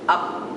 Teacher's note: P is actually accompanied with a glottal stop